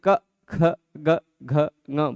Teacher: ऐसा लगेगा कि जीभ की जड़ पर हवा प्रेशर दे रही है। ठीक है, कंठ ही जीभ की जड़ भी है, मतलब देखने के तरीके पर निर्भर करता है।